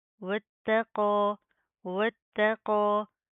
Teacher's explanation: واتقو، واتقو، واو تا زبر وتا زبر تا وتا، تا کے اوپر تشدید ہے، سختی سے مضبوطی سے جما کر پڑھیں گے